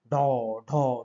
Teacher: তালুর পেছনে গিয়ে আঘাত করে বা তাড়ন করে, এই জন্য এদেরকে বলা হয় তাড়নজাত।